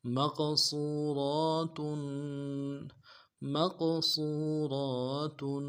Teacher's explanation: میم کو قاف کے ساتھ ملانا ہے، قاف کو موٹا کریں گے، صاد کو موٹا کریں گے، واو کے ساتھ ملانا ہے، واو مدہ ایک اعتدال میں کھینچیں گے، را کے اوپر کھڑا زبر ہے ایک اعتدال میں کھینچیں گے، تاکہ تنوین کو میم کے فا کے ساتھ بدلیں، تاکہ تنوین میں غنہ کریں گے.